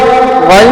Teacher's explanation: غین یہ بھی چونکہ حروف حلقی ہے، یہ حلق کے منہ کی طرف والے حصے سے ادا ہوتی ہے، اور یہ موٹا بھی پڑھا جاتا ہے